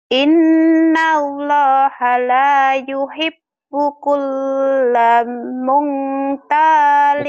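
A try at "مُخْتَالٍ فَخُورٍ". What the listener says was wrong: Bukan mung, ini bukan ihfa, ini mukh ya. Mukh ini. Nah, karena kayak nun ya. Mungkin di pinggirnya nun tapi ihfa. Bukan, ini mukhtalin fakhur ya.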